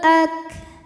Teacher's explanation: Huruf kaf dari segi suaranya kuat, syiddah ya, ak. Dari segi anginnya keluar. Untuk kaf yang sukun, anginnya keluarnya setelah suara keluar, ak, belakangan.